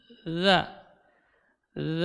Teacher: ini yang mengalir bukan udara tapi yang mengalir suaranya Jadi tidak boleh keluar udara ketika mengucapkan huruf lu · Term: huruf la